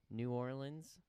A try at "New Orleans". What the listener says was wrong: Nolans. Nolans, there's no R. N-A-W-L-I-N-S.